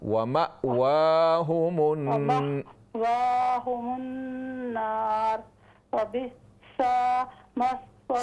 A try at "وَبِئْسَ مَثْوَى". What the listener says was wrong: سین کو لمبا نہ کیجئے وَبِئْسَ مَثْوَى الظَّالِمِينَ وَبِئْسَ